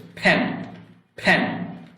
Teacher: ফি যখন উচ্চারণ করছি তখন কিন্তু আমার দুই ঠোঁট একত্রিত হয়ে ফ উচ্চারণ হচ্ছে